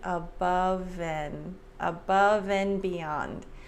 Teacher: the v sound links to the a